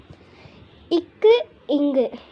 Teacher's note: நாவின் முதற்பகுதி அன்னம் அடிப்பகுதி பொருந்துவதால் ஒலிக்கிறது